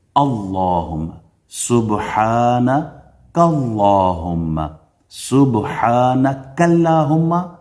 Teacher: اسم جلالہ سے پہلے پیش آ جائے یا زبر آ جائے تو آپ اللہ کا جو نام ہے یہ پر پڑھتے ہیں، فل ماؤتھ، تفخیم